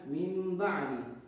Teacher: ketika nun mati bertemu dengan huruf ba maka dibacanya itu seakan-akan ada huruf mim padahal tidak ada Jadi nunnya ini diubah menjadi mim jadi pembacaannya adalah mim ba'di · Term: iqlab